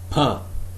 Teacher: You can feel the puff of air when you produce this sound. · the definition of p is that it is an unvoiced bilabial plosive